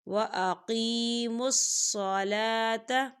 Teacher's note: یا ساکن ہے، یا ساکن سے پہلے زیر ہے، یہاں پر یا مدہ ہوگا